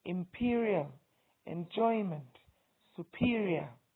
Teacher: Words that have the stress, three-syllable words that have the stress on the second syllable include imperial, enjoyment, superior.